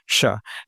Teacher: आपकी जीभ के अग्रभाग का जो पिछला हिस्सा है, वो आपके दाँत के ऊपर वाले हिस्से को, तालू को छूने का प्रयास करेगा, लेकिन छू नहीं पाएगा। यानी दाँत के ठीक पीछे वाला जो तालू का हिस्सा है, उसकी बात कर रहा हूँ।